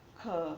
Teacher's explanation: પણ ખ એ ઉચ્ચારણ કરીએ ત્યારે હ એવો અવાજ સંભળાય છે. એટલે કે એના ઉચ્ચારણ વખતે આપણે પ્રાણવાયુ વધારે વપરાય છે, તો આપણે તેને મહાપ્રાણમાં મૂકીએ.